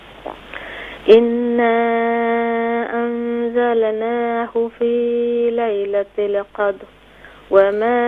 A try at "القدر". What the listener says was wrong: قدر، دیکھیں را کو کلیئر کریں، قدر.